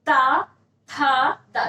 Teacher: जो आपकी जीवा है वो क्या हो रही? दांत से जाके स्पर्श कर छू रही है।